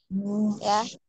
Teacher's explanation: Kemudian ya-nya agak ditekan karena memiliki sifat lin, alin ya, untuk huruf ya-nya. Pertengahan lidahnya bertemu dengan langit-langit atas.